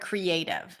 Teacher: The A is the primary stress. Cre is a full vowel, is a pure vowel. So we treat it as a secondary stress. Creative. And then the last syllable is unstressed, probably usually reduced to a schwa.